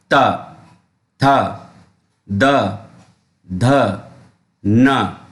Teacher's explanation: ये है दांत, यानी कि जो उच्चारण स्थान है वो है दांत। ये दांत को स्पर्श करके बोले जाते हैं।